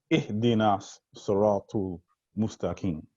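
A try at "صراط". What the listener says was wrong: So let's remember that there's the letter A after T. So it's siratal. Siratal. So you know, I could be wrong, but it sounds like you're saying siratul, right? As if there's a letter U.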